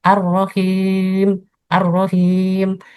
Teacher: ada suara yang keluar dari rongga hidung